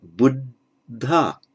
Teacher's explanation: The first D loses its aspiration.